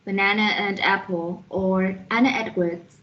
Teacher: when a word ends in a schwa sound and following word begins with any vowel sound most speakers will join the words with r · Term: linking schwa with r